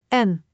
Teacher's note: Make sure to pronounce N with a clear nasal sound, keeping the tongue against the upper gums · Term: Dutch N